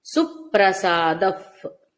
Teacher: ఇక్కడ విసర్గ ఉఫ్ అని వినబడుతుంది